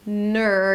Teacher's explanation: My tongue pulls back to the R. My lips round as I pronounce the N. Ner, getting ready for the R.